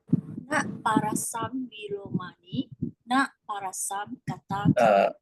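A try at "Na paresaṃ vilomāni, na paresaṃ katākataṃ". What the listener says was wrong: Not parasam, parisam.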